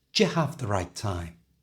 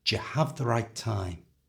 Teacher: The other option we have with the do and the you is to combine them and change them into a j sound.